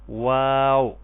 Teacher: دونوں ہونٹ گول کر کے ناتمام بند کرنے سے اس کی ادائیگی ہوگی۔ یعنی ناتمام کا مطلب کہ تمام آپ ہونٹوں کو بند نہیں کریں گے، آدھا کھلے ہوں گے اور آدھے بند ہوں گے، تو یعنی ہونٹ گول ہوں گے بالکل۔